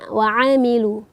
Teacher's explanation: Wa'amilus salihati ini kita pastikan membaca huruf ain, yaitu yang mana makhrajnya itu wasatul halqi, keluar di tengah tenggorokan. Jangan sampai kita tertukar dengan makhraj hamzah.